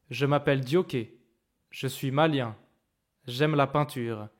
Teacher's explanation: il y a une petite pause entre chaque groupe rythmique